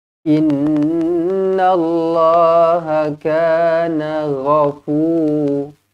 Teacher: nun yang bertanda sabdu wajibul gunnah dengung 2 harakat